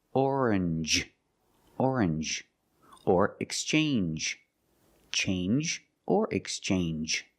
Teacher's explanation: Usually when you see NGE, it makes the NG sound, like orange or exchange. You make the N sound, not the nasal sound, just N, and the J, like juice.